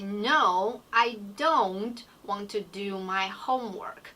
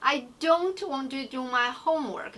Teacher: I actually put stress on these 2 words, don't and homework.